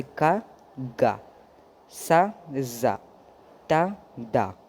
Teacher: adds 2 small marks to unvoiced symbol changing their core consonant sound, K sound to G sound, S sound to Z sound, T sound to D sound and H sound to B sound, जैसे का, गा, सा, जा, ता, दा, हा, तो ये हो जाएगा बा।